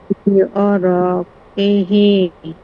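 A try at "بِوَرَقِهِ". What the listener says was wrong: টান হয়ে যাইতাছে আপনার, বিবরকিহি এরকম হবে। আপনি হচ্ছে ওয়াও এর মধ্যে টান দিতেছেন। বিবরকি, আপনি ভাঙ্গা, আপু ভাঙ্গা ভাঙ্গা পড়েন, বিবরকি, বিবরকিহি,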